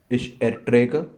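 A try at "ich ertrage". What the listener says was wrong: No, come on. Not A.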